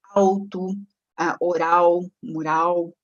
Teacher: A vocalização da consoante lateral, após vogal aberta, principalmente, como alto, oral, mural, né?